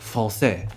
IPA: ʁ